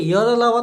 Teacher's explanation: य, र, ल, व अल्प प्राण है पर सघोष है